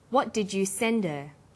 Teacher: Send is the strong form and her is weak. Because her is not stressed, we drop the initial H sound. So it's pronounced sender.